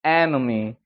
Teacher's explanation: 에네미가 아니고 enemy. 그러니까 앞에 올라갔다가 뒤에 죽어버리는 거죠